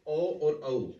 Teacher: ऐसी ध्वनियां जिनके उच्चारण में कंठ और होंठ दोनों की सहायता लेनी पड़ती है, उनको कंठोष्ठ्य ध्वनियों के नाम से जाना जाता है।